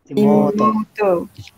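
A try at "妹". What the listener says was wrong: Jangan panjang sangat nanti bunyi lembu. Imoto.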